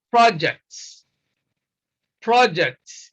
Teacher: Consider the word projects. Projects, you see stress is on the first syllable when we use this word as a noun, project. A noun is a project here means a piece of work undertaken.